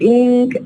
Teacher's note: we have a change from an alveolar na to velar ink because of what? If you check the environment here, the following sound is ka. The following sound is ka. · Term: Partial assimilation